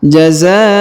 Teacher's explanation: Huruf za perhatikan dipanjangkan 5 harokat karena di atasnya terdapat tanda panjang 5 harokat yang ini ya, garis ini seperti bendera ya.